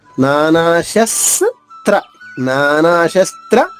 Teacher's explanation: అక్షరంలో మూడు హల్లులు ఉన్నాయి. స ఒక ఒకటి త ఒకటి ర ఒకటి ముందుగా స పొల్లుగా పలికేస్తే తర్వాత త్ర విడిగా పలకొచ్చు